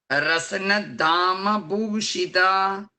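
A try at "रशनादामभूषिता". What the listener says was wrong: It is the Sha, like it's in Shiva Sha, not the Sa. Rashanadama Bhushita. So the is the regular Alpa Prana the.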